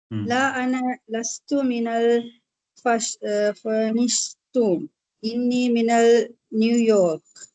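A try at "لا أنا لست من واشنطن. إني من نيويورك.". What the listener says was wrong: இல்ல பாருங்க, மினல் இல்ல, அல் இல்ல. لا أنا لست من واشنطن.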